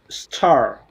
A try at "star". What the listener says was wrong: a little bit longer though make it long pull the words longer like this